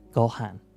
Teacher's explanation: they are still going to say go in a lower pitch than they will say han